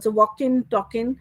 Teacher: the pronunciation walking talking is frequently heard as if there was simply an n